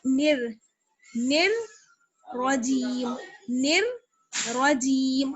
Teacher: اب دیکھیے نون کو ہم را سے ملائیں گے. نون را زیر نر، را پہ زبر ہے اس لیے موٹا پڑھیں گے